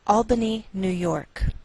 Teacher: we treat New York as one word and we place more stress on the second part, York.